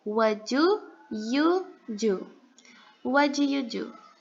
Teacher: nesse caso, a letra T vai ser inaudível e nós vamos pronunciar what do you do?